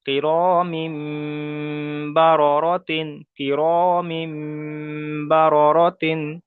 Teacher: তানবিনকে মিমের দ্বারাই পরিবর্তন করে একালিপ পরিমাণ গণনা করে পড়তে হবে · যে মিম উচ্চারণ করছে এই উচ্চারণটা একালি পরিমাণ গুণনা করতে হবে, একালি পরিমাণ গুণনা করতে হবে।